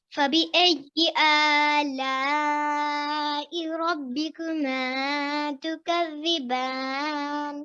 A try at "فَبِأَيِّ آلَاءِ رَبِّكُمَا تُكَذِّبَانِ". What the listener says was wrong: So essentially, you should be reciting it for quite a bit longer.